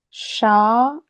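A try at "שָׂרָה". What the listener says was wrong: It's not a Shah. It's a Sa. Ra.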